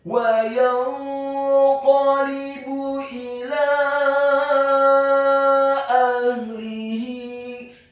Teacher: huruf qafnya dibaca tafkhim, tebal, fathah 1 harokat. Huruf lamnya dibaca tipis, kasrah 1 harokat.